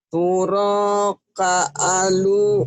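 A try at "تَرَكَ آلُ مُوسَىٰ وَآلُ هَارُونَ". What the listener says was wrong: bukan turo, Bu. Taro. Taroka. Taroka taro bukan turo, taro.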